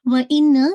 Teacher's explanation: व इन्ना, वाव के बाद इन्ना को देखिएगा, नून मुशद्दद है। जब भी नून विद मुशद्दा के साथ होता है तो उस पे मोस्ट कंप्लीट गन्ना होता है, जिसको हम अकमल गन्ना कहते हैं